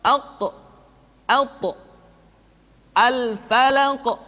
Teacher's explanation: Kemudian huruf qaf dan ta karena dia memiliki sifat al-qalqalah ketika dalam keadaan sukun, maka qalqalah yang terdengar ketika mengucapkan qaf dan ta terdengar menebal suaranya